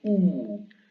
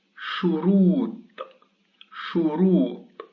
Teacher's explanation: The second waw is preceded by a dhamma and carries a sukun, so this one is a long vowel, so it goes oo.